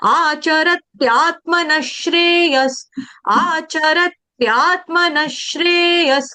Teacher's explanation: आघात का मतलब होता है डबल वर्ड करना है आपने, आधा त दो दो बार आएगा